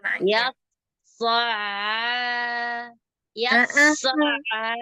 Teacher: Ainnya itu harus bersih. Nggak boleh pakai pangkal lidahnya naik. Kalau pangkal lidah naik jadi so'a. · Lebih ainnya lebih dibersihkan lagi dari rasa berat. Jadi ain itu nggak berat. Jadi diringankan ya Ustazah Afwan.